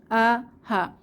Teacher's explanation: তিনটি হরফ হচ্ছে কণ্ঠনালীর হরফ প্রথমে হামজা জবর আ জবর হা এই দুইটি হরফ কণ্ঠনালীর শুরু থেকে উচ্চারিত হয় আ হা কণ্ঠনালী হলক বা গলা যাই বলি তো হলকের শুরু